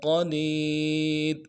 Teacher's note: کل، وہو علی کل شیء، شین کو یا کے ساتھ ملانا ہے، یا لین ہے بغیر کھینچے پڑھیں گے، حمزہ کے نیچے تنوین ہے غنہ کریں گے۔ شیء قدیر، قاف کو موٹا کریں گے، دال کو یا کے ساتھ ملانا ہے، یا مدہ ہے ایک الف دال میں کھینچیں گے اور را کو موٹا ادا کریں گے۔